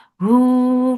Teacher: for the circle lips and make it 2 counts long. Mad sila sughra.